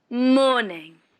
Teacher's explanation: The stress on morning is on the first syllable.